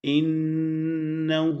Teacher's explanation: اس کے بعد انہو، ہا پہ یہ الٹا پیش ہے، تھوڑا سا اس کو لمبا کیا جاتا ہے، اور ان کے نون پہ شد ہونے کی وجہ سے غنہ ہوگا